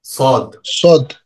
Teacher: জিহ্বার আগা সামনের নিচের দুই দাঁতের পেট ও আগার সঙ্গে লাগাইয়া।